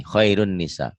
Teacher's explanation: Ini nun mati atau tanwin, ketemu nun dan mim itu idgham, idgham bigunnah.